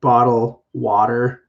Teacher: It actually turns to like a D instead of the T.